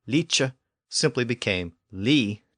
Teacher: The final consonant, k or ch, disappeared over time.